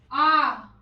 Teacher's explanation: मुख द्वार पूरा खुल जाता है। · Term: विवृत स्वर